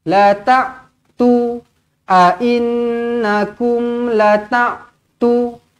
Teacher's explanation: dia tertukar huruf hamzah ni bacaan dia menjadi huruf ain